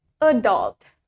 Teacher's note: in American America the stress for the word adult is in the second syllable let's say it with me adult adult in British adult in